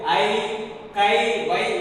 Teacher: தனியாக படிக்கும் பொழுது தனக்குரிய 2 மாத்திரை அளவில் இருந்து குறைந்து ஒலிக்காமல் அப்படியே ஒலிக்கிறது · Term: ஐகாரம்